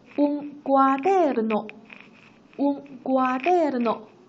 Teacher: 需要注意这里的 d 是浊音的